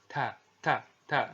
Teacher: Huruf ta ini keluar dengan menyentuhkan ujung lidah kita dengan gusi-gusi gigi seri bagian atas. Kemudian huruf ta ya, ini terdengar ketika diucapkan itu terdengar ada semacam nafas yang mengalir